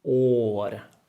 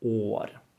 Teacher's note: It should be a long and closed å.